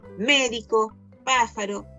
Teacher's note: llevan la sílaba tónica en la antepenúltima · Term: palabras esdrújulas